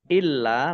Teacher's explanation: illa lamnya dibaca dobel ada tasdidnya